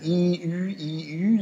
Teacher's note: der Unterschied ist nur die lippenrundung · hintereinander sprechen u u merken Sie wie die Zunge bewegt werden wenn sie i ü i ü sagen merken sie dass ich nur die Lippen bewegen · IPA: i y